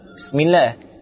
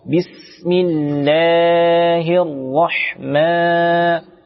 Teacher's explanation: Terdapat huruf mad pada huruf lamnya yang harus dibaca panjang 2 harakat.